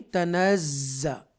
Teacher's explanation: extra stress کے ساتھ ہم زا کو پڑھیں گے، اس کو زا مشدہ کہتے ہیں